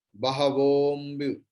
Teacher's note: Bahavombu. Don't chant ambu separately. It will be bahavombu. Okar will be prolonged.